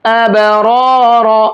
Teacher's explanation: دونوں کے اوپر زبر ہیں تو دونوں کو موٹا کر کے پڑھیں گے